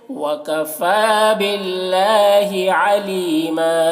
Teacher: باللہ اللہ کو باریک پڑھنا ہے اور کھڑا زبر ہے جو الف مدہ کی طرح ہے